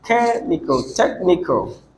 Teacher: so you stress the first one which is the third syllable from the end